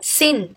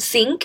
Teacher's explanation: So it changes place of articulation from alveolar nasal to velar nasal. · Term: velarization